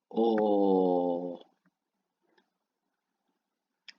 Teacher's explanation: Your tongue goes a little bit further back in your mouth, and your mouth almost makes a bit of a circle shape. So you go, oh.